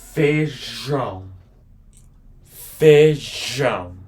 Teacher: there's an accent on top of this A, which is called a tilt, which makes it a more nasal sound.